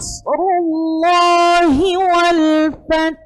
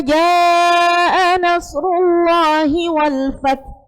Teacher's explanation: H itu ditampakkan hamesnya ditampakkan dikeluarkan anginnya dan tetap dibaca jelas